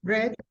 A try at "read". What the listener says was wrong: Read. Very good.